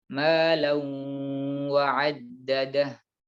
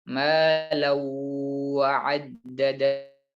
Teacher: Jadi bukan sekedar ditahan, tapi ditambahkan gunnah, yaitu suara yang keluar dari pangkal hidung. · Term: idgham bi gunnah